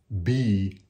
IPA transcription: b